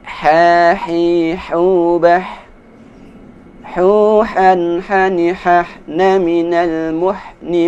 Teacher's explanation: Suara ha dikeluarkan di tenggorokan seperti ketika kita mengambil nafas ha.